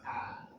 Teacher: ada hamzah dari pangkal tenggorokan